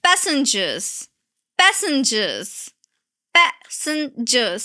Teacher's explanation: Three syllables and you have to stress P.